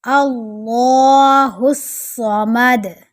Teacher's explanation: لفظ اللہ کو موٹا کریں گے، صاد کو موٹا کریں گے اور دال پر کلکلا کریں گے۔